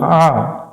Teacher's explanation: এখানে আইন একটু গলা চেপে উচ্চারণ করবো